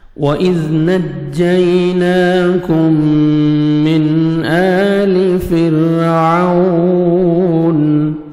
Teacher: وَإِذْ واو پہ لپس کو راؤنڈ میں لے کے جائیں گے، ہونٹ گول کریں گے، واو اچھی طرح ادا ہوئے گا، زال کو نرمی سے ادا کریں گے۔